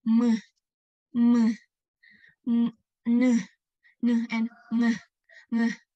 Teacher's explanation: Nasal sounds produced when the velum is lowered, so the air escapes not only through the mouth but also the nose.